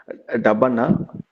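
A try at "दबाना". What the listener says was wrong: இதுக்கு வந்து அழுத்துவதற்கு உச்சரிப்பு தபனா இல்லைங்கய்யா இது வந்து தபானா தபானா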